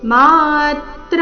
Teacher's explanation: ಮಾತ್ರ ಎರಡು ದೀರ್ಘ ತ್ರ ಮೇಲೆ ಆಘಾತ